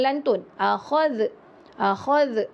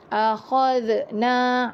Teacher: huruf zal tidak ada lantunan